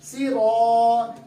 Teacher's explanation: کیونکہ الف سے پہلے والا را پور ہے, اس لیے آواز الف کی پور جا رہی ہے.